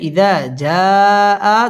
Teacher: মদের হরফের উপর মোটা চিহ্ন বামে হামজা, মধ্যে মুত্তাসিল 4 আলিফ টেনে পড়তে হবে।